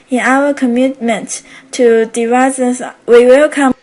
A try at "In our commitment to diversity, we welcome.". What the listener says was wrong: No. It's in our commitment to diversity. Diversity. So those longer syllables, you have a tendency not to pronounce all those syllables in there. You don't want to do that, because if you don't clearly pronounce all the syllables, a native speaker will not be able to understand what you're saying.